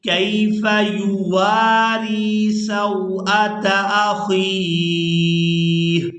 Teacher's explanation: واو کو الف مدہ کی وجہ سے، را کو یاء مدہ کی وجہ سے کھینچ کر ادا کریں گے